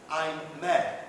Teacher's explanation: L'aliéné se dirait à ces moments-là, involontairement et en sa langue naturelle, « I'm mad », ce qui, bien sûr, signifie « je suis fou », et qui se prononce « I am ». Le « a » de la diphtongue est bien plus fort que le « i » ouvert et bref. Mais la voyelle est entre « est » et « a » antérieure.